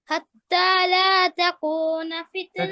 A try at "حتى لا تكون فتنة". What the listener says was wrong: তাকুকু lightly কফ দিয়ে না, কাফ দিয়ে।